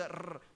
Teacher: Moroccans, when they recite Quran, they always do the rrr. But if you go to the East, they don't do that.